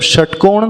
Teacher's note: जब षटकोण का श का उच्चारण करना है तो जीभ और ट्विस्ट हो जाएगी